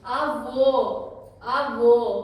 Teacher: ये जो आ वो है इसमें एंड में आपको स्ट्रेच करना है साउंड को